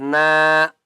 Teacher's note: ایک الف کی مقدار کھینچ کر پڑھیں گے